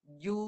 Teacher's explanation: Dia ada dua bunyi. Satu bunyi jim baris depan, ju. Satu bunyi dengung di hidung.